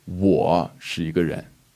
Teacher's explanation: like you put emphasis on the 我, it's saying I am a person, but he or she or it most likely is not